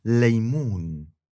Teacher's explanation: First, we talked about l as in laymoon, which is an L made with only the tip of your tongue. The back goes down.